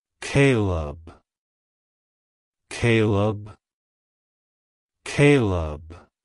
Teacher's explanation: to pronounce it correctly emphasize the first syllable k y and pronounce the second syllable Leb as in lemon